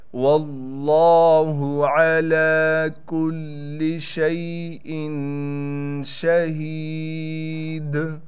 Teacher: شین میں تفشی یعنی شین کی صفت نکال کر شین کو ہم پڑھیں گے۔ ہا کے بعد یا ہونے کی وجہ سے ہا کو ایک الف کی مقدار کھینچیں گے، دال پر قلقلہ کیا جائے گا۔